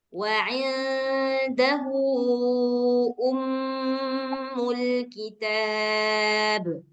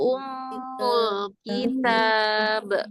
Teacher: mim sendiri kalau bertasydid itu sudah gunah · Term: ghunah